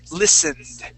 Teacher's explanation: ed sounds like a D. We do not say ed, listen ed. We say listened.